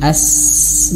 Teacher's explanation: Kalau hamas mengalir nafas ya, seperti huruf sin, as mengalir nafas.